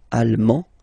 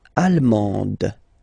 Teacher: you don't pronounce the final D, but then you pronounce it here for the feminine form. Allemande, d, d, okay?